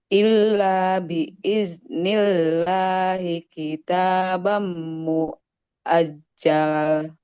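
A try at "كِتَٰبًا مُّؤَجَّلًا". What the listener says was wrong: enggak boleh muajjal muajjala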